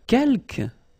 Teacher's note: you don't pronounce the final S here